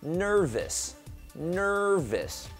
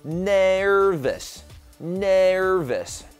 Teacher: 直接把那个▁n▁和▁er▁念在一块